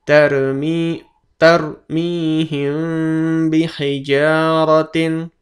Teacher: Tarmihim bihijaratin tarmihim bihijaratin, bukan tarmihim bihijaratin, tapi huruf mim dan ba samar-samar, bagaikan huruf mim masuk ke huruf ba